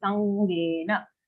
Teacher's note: After sa, we have the anga sound, half anga sound joined to a ge.